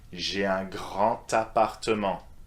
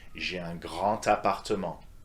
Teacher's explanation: You see, grand ends with a D an appartement with an A, you need to link these together, all right? So despite the D of grand, it's a te sound that you want to use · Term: liaison